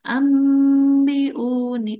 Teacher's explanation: nun matinya jadi enggak ada karena diganti dengan mim. Contohnya di sini ini an ini mati ya ketemu ba di sini ambiuni. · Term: iqlab